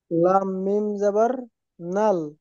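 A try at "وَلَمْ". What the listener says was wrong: নাল হয় না নুন যদি হতো তাহলে নাল হতো ওটা লাম মানে ল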